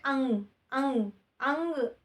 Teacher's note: तो वो उसमें नाक से बोलने का मतलब क्या होता है कि वो उसमें क्या होती है, नाक से कंपन आती है, यानी कि नाक से भी वायु निकलती है।